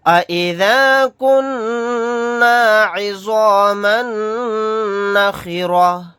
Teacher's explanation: تا کو ہا ساکن بنا کر پڑھیں گے آیت کرنے کی صورت میں